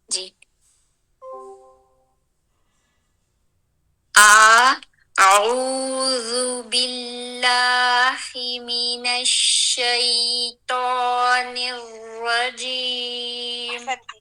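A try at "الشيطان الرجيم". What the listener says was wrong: اب شیطان الرا بس تھوڑا سا اور حرف الطاء میں بھرا کرے. حرف الطاء کو تو صاد ضاد طا. شیطان الرجیم.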